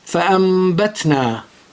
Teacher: The noon is gray, above it is green mim, means ghunna. So the noon is converted into mim with ghunna and it becomes fa'ambatna.